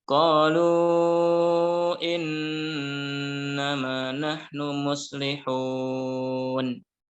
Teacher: Qalu lu-nya dibaca panjang 4 atau 5 karena bertemu dengan hamzah pada kata setelahnya yaitu kata innama.